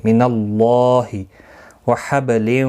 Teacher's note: اللہ کا لام زبر کی وجہ سے پر پڑھا جائے گا، اس کے اوپر کھڑی زبر بھی ہے، ایک الف کی مقدار کے برابر کھینچ کر بھی پڑھیں گے.